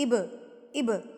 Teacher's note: جب با کے اوپر آپ کو ایسی والی علامت دکھے گی تو اس کا مطلب ہے اس با کو آپ نے ہلا کے پڑھنا ہے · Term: قلقلہ